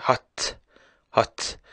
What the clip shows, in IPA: hʌtʰ